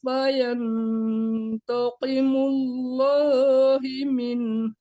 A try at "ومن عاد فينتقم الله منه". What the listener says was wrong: Tadi dibacanya ha itu dibaca hu dibaca hi. Afallahu amma salaf wa man ada takimullahu min ya tadi baca himin gitu.